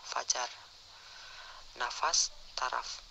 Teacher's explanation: Konsonan F, kriteria bunyi labiodental geseran tak bersuara